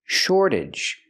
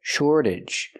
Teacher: We see the T pronounced like a fast D because it's after an R and before a vowel. Shortage. And the AGE makes you sound ij, relaxed and closed.